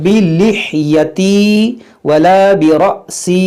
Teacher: یہ حمزہ ساکنہ ہے، جھٹکا ہوگا، را کو موٹا پڑھیں گے، یا مدہ کو کھینچیں گے.